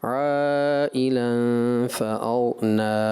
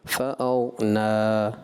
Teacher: نا پڑھنے کے بعد ہونٹوں کو بند کر دیا، اس سے بچیں